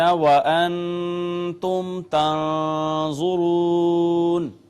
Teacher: نون ساکن پہ ہم نے کیا اخفا، میم ساکن پہ ہم نے کیا اظہار شفوی، پھر تنظرون کا نون ساکن یہاں پہ پھر اخفا کیا، اور اس کے بعد واو کا ما قبل مضموم واو مدہ ہو گئی۔